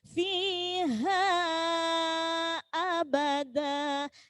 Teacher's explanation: Mad jaiz nggih, panjangnya 2,5 alif.